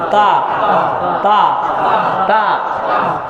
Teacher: শক্ত হবে, জিহ্বার আগা সামনের দুই দাঁতের গোড়ার সাথে লাগবে।